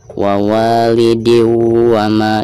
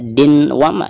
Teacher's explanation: tanwin yang ada di bawah dal tersebut itu harus dimasukkan langsung ke huruf wawnya ya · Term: idgham bigunah